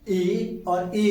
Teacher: ई और बड़ी ई इनका उच्चारण स्थान क्या है तालु है